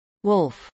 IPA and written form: wʊlf (wolf)